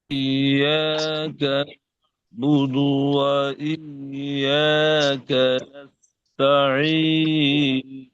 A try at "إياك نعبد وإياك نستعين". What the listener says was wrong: হযরত, এখানে আপনার সমস্যা হলো হামজাটা হলো হামজায়ে তাহকিক, শক্ত উচ্চারণ। হামজাটা কি হামজায়ে তাহকিক করে হামজা উচ্চারণ হবে, স্বাভাবিক হামজা নয় এটা। সুতরাং স্বাভাবিক ভাবে উচ্চারণ করলে নরমাল ভাবে এরকম নয়, ইয়া কানা আবুদু ওয়া ইয়া কানাস্তাইন, বরং ওই হামজাটা ইয়ার সাথে চেপে ধরবেন।